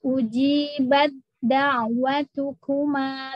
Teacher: Ujibat da'watukuma seperti dal dua berarti dal pertama sukun dal keduanya berharokat fathah. Taknya hilang sama sekali. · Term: masuk sempurna